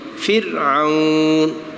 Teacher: را ساکن سے پہلے زیر ہے تو باریک